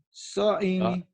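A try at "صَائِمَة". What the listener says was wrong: Kok so'imi orang barisnya di atas? Kamu lupa tanda ya.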